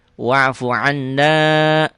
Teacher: Dibaca double, ditahan dan dengung ke hidung. Itu gunnah.